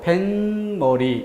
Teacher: 배와 머리가 만나는 결합 조건인데 소리를 보니까 어때요? 뱃머리 이렇게 니은으로 소리가 납니다. 니은. 근데 이 니은이 어쨌든 A와 B 사이에 덧생겨난 소리, 사이에서 난 소리. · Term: 사이소리